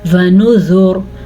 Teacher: ونذر، وقف آ گیا، وقف کی وجہ سے را ساکن ہو گیا. را ساکن سے پہلے دیکھا تو پیش تھی تو را پر پڑی جائے گی اگر ہم وقف کریں گے. وقف نہ کرنے کی صورت میں را باریک پڑی جائے گی.